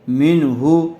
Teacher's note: میم نون زیر من، ہا پیش ہو، من ہو. نون ساکن کے بعد ہا آیا ہوا ہے حروف حلقی میں سے، اس لیے بغیر غننے کے جلد اظہار کر کے پڑھیں گے